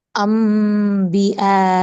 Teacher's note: நூன கட் பண்ணிட்டு நூனுக்கு மீம் வந்து வச்சு ஓதணும் அட் தி சேம் டைம் இங்க டூ கர்ஸ் குன்னா குடுக்கணும் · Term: இக்லாப்